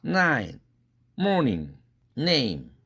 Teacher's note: 앞뒤에 다 비음이 있죠. 그러니까 가운데에 끼어 있는 모음은 당연히 코로 새 나간다. 비음화된다. 그래서 모음이 동화된다.